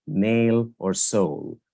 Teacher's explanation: Instead of saying the words nail and soul as a diphthong, meaning two vowels coming together, speakers of Indian English might tend to say nail or soul, as making the vowel A and O longer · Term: vowel elongation